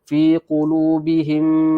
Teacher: mim mati bertemu dengan mim, maka di sini ialah hukum idgham mithlain, dengung 2 harakat.